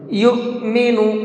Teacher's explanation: یؤمن، یہاں پر یہ حمزہ ساکن ہے، حمزہ ساکن کو ہمیشہ جھٹکے کے ساتھ میں پڑھا جاتا ہے، اس لیے اس حمزہ کو جھٹکے سے پڑھیں گے، یؤمن۔